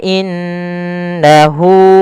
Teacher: pada lafal hu ada mad silah qasirah yang dimana hu-nya dipanjangkan sepanjang 2 harakat ditandai dengan ada waw kecil di samping hu itu, maka dinamakan dengan mad silah qasirah karena dia berkenaan dengan ha dhamir.